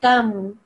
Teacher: So we don't make a noon sound anymore. We don't say tan anymore.